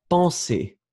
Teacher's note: Remember that you have the nasal en, so it's really en.